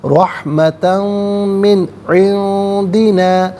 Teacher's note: اور من میں نون ساکن، اس کے بعد عندی میں عین ہے، عین آ رہا ہے حرف حلقی تو نون ساکن کو اظہار کے ساتھ پڑھا جائے گا